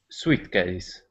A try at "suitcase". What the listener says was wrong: All right, very close. Now, that word is pronounced suitcase. Yeah, the I would not be pronounced there, suitcase, okay?